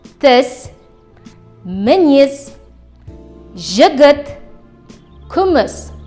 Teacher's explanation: Кончик языка касается нижних зубов, произносится сверхкратко.